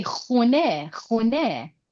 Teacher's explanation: In modern Persian these days, we don't say khane. We change a to u. We say khune.